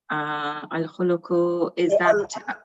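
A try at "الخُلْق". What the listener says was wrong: So it's al-khulqu. this lam has a sukoon. Al-khulqu.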